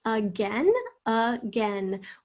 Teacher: this is interesting schwa at the beginning